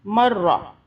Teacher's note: را کو موٹا پڑھتے ہیں، زبر ہے را کے اوپر